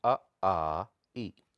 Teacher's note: आप इसकी प्रैक्टिस कर सकते हैं, नाक को पूरी तरह से बंद कर दीजिए। अगर आप नाक बंद भी कर देते हैं तब भी आप इन्हें प्रोनाउंस करेंगे तो इनके साउंड में कोई फर्क नहीं पड़ेगा। तो इनको बोलेंगे निर्नुनासिक, यानी मौखिक स्वर जिनमें अनुनासिक है ही नहीं जो, ठीक है।